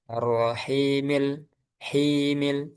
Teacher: himil tetap dua harokat, tidak hilang dua harokatnya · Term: mad alid li sukun